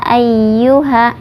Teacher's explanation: Kemudian hamzahnya di ayyuha ada alif ya, hamzahnya itu ya ayyuha. Ya ayyuha dibacanya 4 sampai 5 harokat. Mad jaiz munfasil.